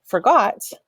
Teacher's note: that G-O-T on the end of that word is slightly longer. It just has a little bit more stress. You lean into that word just a little bit more.